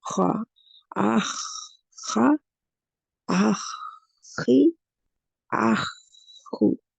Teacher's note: اس کو موٹائی آتی ہے اس میں استعلا کی وجہ سے، لیکن اس میں دباؤ نہیں آتا، وہ دباؤ نہیں آتا جو آنا چاہیے اتباق کی طرح، وہ نہیں، کیونکہ یہ اتباق کا لیٹر نہیں ہے.